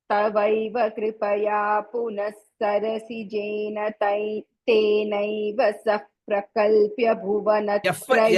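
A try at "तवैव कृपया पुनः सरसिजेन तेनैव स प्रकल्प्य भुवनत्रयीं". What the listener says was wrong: ఎఫ్ వినిపించిందే, ఎఫ్ వినిపించేసింది.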